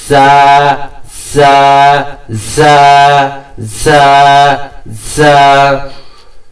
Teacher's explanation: এটা আপনার দুই দাঁতের মাছ বরাবর, দুই দাঁতের মাছ বরাবর আপনার জিহ্বা নিয়ে যাবেন এবং সিটি সহকারে এটা একটা এক্সট্রা আওয়াজ সহকারে আপনি উচ্চারণ করবেন। জা এবং একালে টানতে হবে।